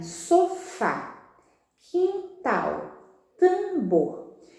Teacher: em todas elas a sílaba tônica é a última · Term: oxítona